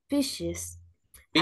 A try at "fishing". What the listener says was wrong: Fishing, con ING.